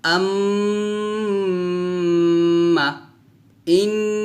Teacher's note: নাকের বাঁশি হইতে গুন্না পড়া হয়, অর্থাৎ এটা গুণ্য হবে, গুনগুন করে গুন্না করতে হবে, আর এই গুন্নাকে বলা হবে ওয়াজিব গুন্না।